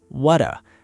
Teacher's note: The T drops, the O reduces.